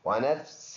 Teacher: سین میں اخفا کریں گے اور ایک الف کے اندازے سے ناک میں آواز لے کے جائیں گے